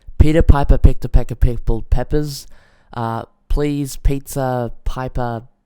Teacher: you really do hear that p. You hear the air releasing from my mouth, which isn't a problem because you can, like I said, do something like a windshield, and I'll demonstrate with this one right now. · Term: plosives